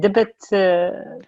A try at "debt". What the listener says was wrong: Pronounce debt. The B is silent. Debit is your bank card. Like if you go to a store and you want to pay with your debit card, debit is your cash card for the bank. Debt, when you borrow money, the B is silent.